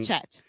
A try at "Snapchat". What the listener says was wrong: The first time I heard a little bit of Snapchat, so you're saying shh, but it's ch.